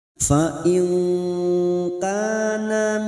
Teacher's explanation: Fa in nun sukun bertemu kaf ikfa hakiki. Kita samarkan bunyi nun sukun mendengung 2 atau 3 harokat. Fa in kana ka fathah diikuti alif 2 harokat.